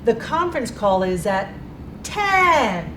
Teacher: when we go up on 10, we're stepping, it means we're skipping some notes. The conference call is at 10, and then I'm gliding through the notes.